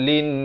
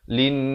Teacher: Kemudian lin, di sini wajibul gunnah, didengungkan 2 harakat. Linnas, barulah berhenti.